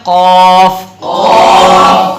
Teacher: تالو کے نرم حصے سے. تو یہ قاف ادا ہوگا.